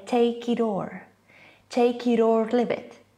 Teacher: natives turn the T sound into kind of an R, soft sound. Instead of take it or, they rather say take it or leave it, take it or leave it.